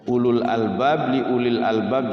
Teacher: Enggak dibaca panjang dua-duanya itu wunya ulu kesannya kayak panjang padahal bukan panjang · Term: tidak panjang